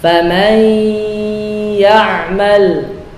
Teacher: gunnah dibaca dengan gunnah yang panjang, derajat tingkatan yang paling sempurna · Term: akmal